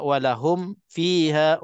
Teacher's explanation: Mim mati dengan fa. Mim di dua bibir mulut, fa di bibir mulut kan. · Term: izhar syafawi